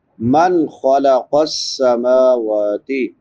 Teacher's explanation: نون ساکن کے بعد حروف حلقی میں سے خا ہے تو یہاں پہ اظہار ہوگا، اظہار یعنی حرف کو ظاہر کر کے پڑھنا۔